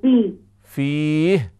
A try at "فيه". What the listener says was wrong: تھوڑا لمبا کریں فيه